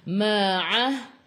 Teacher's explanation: Alif zaidah tak perlu baca ma'ah. A'i'u daripada kerongkong bukan daripada hidung. Ma'ah. Matikan dengan huruf ha.